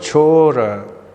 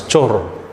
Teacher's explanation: They drop off the last vowel by process of apocope.